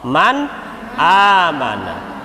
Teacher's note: disebut idhar halqi karena hurufnya keluar dari tenggorokan